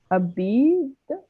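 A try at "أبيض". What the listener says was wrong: We have on the ya, we have a fatha. Abiyad, which means,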